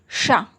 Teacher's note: ऊपर जो हमारा तालु है उससे निकलता है शा। शा, तो शा ध्वनि का उच्चारण तालव्य है।